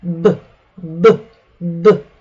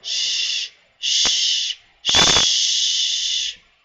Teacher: The B sound is voiced and the sh sound is voiceless.